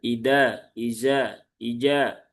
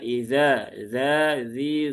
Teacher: ujung lidah di gigi seri atas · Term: huruf dalal